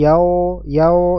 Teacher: membaca huruf wau dammah ya pada kata yaumiddin dengan tebal ya menjadi seperti yao yao ya bukan Yao tapi yau yau